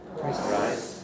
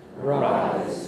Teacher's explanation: Can you hear that lengthening of the vowel gives you the Z-like effect? And that's the thing which people, English speakers, listen for.